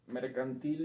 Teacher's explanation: yo diría que es aguda la sílaba tónica es la última